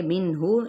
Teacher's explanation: نون کی آواز کو ظاہر کر کے پڑھیں گے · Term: اظہار